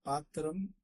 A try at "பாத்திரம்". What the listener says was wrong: अत्र उच्चारणदोषः कश्चन दृश्यते. पात्तिरम् இல்ல பாத்திரம், பாத்தீரம் ஈ மாதிரி கேட்கிற நடுவுல பாத்தீரம் அப்படி வராது, பாத்திரம்.